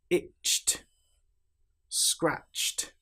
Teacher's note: we don't pronounce the E sound at all. The T is almost like an extra consonant that links directly to the consonant before it. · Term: t sound